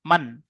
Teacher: নুন সাকিনকে বিনা গুণায় জাহির করে তাড়াতাড়ি পড়তে হবে, একে ইজহারে বলে।